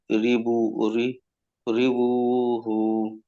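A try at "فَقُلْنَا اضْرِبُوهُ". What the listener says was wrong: রিবু টান হয়ে যাচ্ছে, রিবু টান হবে একালিপ, কিন্তু হু টান হয়ে যাচ্ছে পরে।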